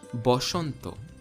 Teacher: Odia calls this word Ghora, while a Hindi person would call it Ghar. Bengali similarly has Shwa in it, but interestingly, it's not A, it's O. Therefore, the Hindi word Vasant, which in Sanskrit would be Vasanta, in Bengali becomes Boshanto.